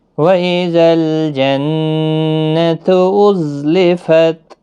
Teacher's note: لام ساکن کو ہلانا نہیں، نون مشدد پر غنہ ہوگا